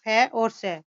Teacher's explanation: फ और स अघोष ध्वनियां हैं। अघोष ध्वनियां वे होती है जिनके उच्चारण में स्वर तंत्रियों में कंपन नहीं होता।